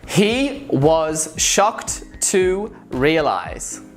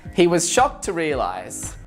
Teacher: I pretty much stressed every word